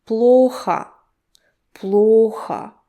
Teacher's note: look at the O that is stressed and at the second O, which turns to A.